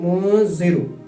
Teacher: اب یہاں ہم نے یہاں دیکھا کہ نون ساکن کے بعد حروف اخفا کے حروفوں میں سے زال آ رہا ہے، تو اس لیے یہاں نون کو ناک میں چھپا کر ادا کریں گے